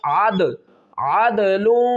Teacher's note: دال ساکن ہے قلقلہ کریں گے. عدل لام کو آگے اس واو کے ساتھ ملائیں گے.